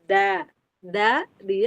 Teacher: kalau dal itu dia ke pangkal gigi seri atas, ke tempat tumbuhnya gigi.